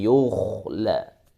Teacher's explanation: Dijaga posisi dhammahnya supaya dia tetap tebal.